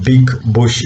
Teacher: it's a voiced sound because vocal cords remain together. When the air escapes, it produces vibration. Therefore, it's voiced.